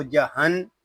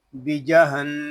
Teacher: نون مشدد ہے، اس میں غنہ کریں گے، شروع ہی سے غنہ کریں گے. اس کو جہن اس طرح نہیں پڑھیں گے، اس کو پڑھیں گے بیجہن.